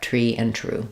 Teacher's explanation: you don't really need that rounding of tree um sometimes people teach the r as a rounded lip um